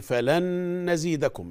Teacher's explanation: عشان دي نون بعدها نون، إدغام بغنة